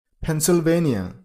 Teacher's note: Stress on a third syllable